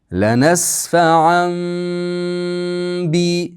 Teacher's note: Iqlobda bitta ba harfi bor. Tanvinimiz mimga aylanib ketadi. Shuning uchun ham yerga mim yozib qo'yilgan.